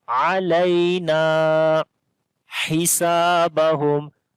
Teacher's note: Ha we read from the middle of the throat. Sin we long due to alif madda.